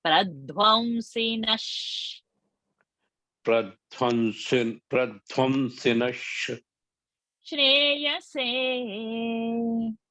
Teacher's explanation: So shreyase is having sh into it. Visarga will become sh.